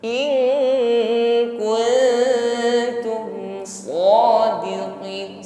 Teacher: Di sini nun sukun kita siapkan pada makhraj kaf, maka ada bunyi ng di situ. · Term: ikhfa adna